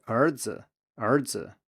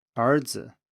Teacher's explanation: And you can hear that 杯 here is high, and then the z part is lower than the 杯, so 杯子. Then after a rising tone, that would be the second tone, the neutral tone is also lower than the end of the preceding tone.